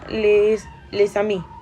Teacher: dans le cas les amis, les deux mots devront être lus comme un seul